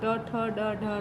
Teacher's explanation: इनका उच्चारण करते समय जिह्वा के ऊपर के दांतों के साथ ऊपर खुरदरे हिस्से का स्पर्श करती है। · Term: मूर्धन्य